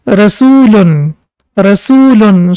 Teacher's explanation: Rusulun was for 1 second, and now we can see that U sound is prolonged for 2 seconds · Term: long Dhamma